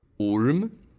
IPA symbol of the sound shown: ʊ